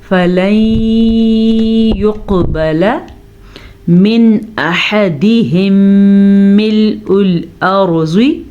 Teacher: نون ساکن کے بعد یا ہے جو کہ یمون میں سے ہے تو ہم نون ساکن کو چھپے ہوئے غننے کے ساتھ پڑھیں گے